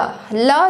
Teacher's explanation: ल जब हम बोलते हैं तो हमारी जो जिह्वा है वो मुड़ती है और जो वायु होती है वो उसके पीछे से निकलती है। ये चीज़ अगर आप कॉन्सेप्ट समझ जाएंगे तो क्या समझ में आएगा, ल क्या है, पार्श्विक व्यंजन हो।